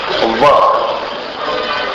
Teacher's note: अब इसके बाद एक आता है वकारस्य दंतोष्ठ। व का जो उच्चारण होता है वो ऊपर के दांत और नीचे के ओठ को मिलाकर करते हैं।